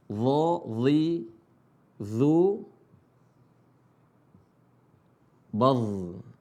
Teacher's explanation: Cara bacanya adalah ujung lisan ketemu ujung gigi seri atas. Dha, tapi dibaca tebal. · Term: huruf dha